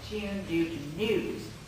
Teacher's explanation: The last of our characteristic southern vowels is the unglided U of tune due to news.